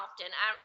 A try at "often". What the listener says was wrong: and I think the T is silent. Often.